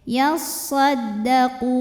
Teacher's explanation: Sebab ada waw sukun didahului baris dhammah, maka qaf dipanjangkan 2 harokat saja. Jadi walaupun berhenti ini tetap 2 ya. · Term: mad tabi'i